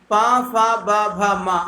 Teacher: ऐसे वर्ण जो दोनों ओठों को मिलाकर बोले जाते हैं ओष्ठ वर्ण कहलाते हैं